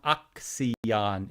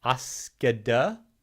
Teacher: Notice it's not axion anymore. We have had metathesis for this word.